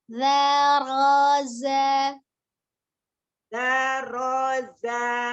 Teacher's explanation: Za-nya ujung lidahnya dikeluarkan